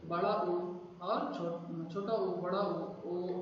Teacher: इनको बोलते समय मुंह का आकार जो होता है गोलाकार हो जाता है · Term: वृत्त मुखी स्वर